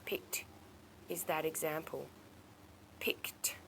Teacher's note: even though it's got an ed we pronounce it with a t